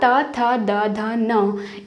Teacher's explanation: हमारी जो जीभ है वो दांतों से टकर रही है, तो इसलिए इनको कहा गया दंत्य वर्ण